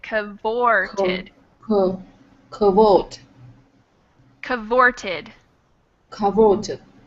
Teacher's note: the stress is on the o